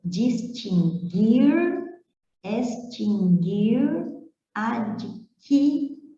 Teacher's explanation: As palavras distinguir, extinguir e adquirir não têm o U pronunciado.